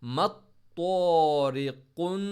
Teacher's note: طوا کو موٹا، را کو چھوٹا پڑھیں گے